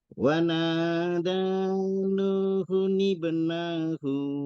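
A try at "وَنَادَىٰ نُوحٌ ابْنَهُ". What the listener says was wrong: nanya pendek. Wanada nuhu ibnahu, nanya pendek.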